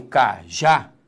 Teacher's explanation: quando eu falo cajá repare que a sílaba tônica é a última